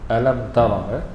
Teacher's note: Alam tara, izhar syafawi, yakni dizahirkan sebutan mim mati tanpa dengung.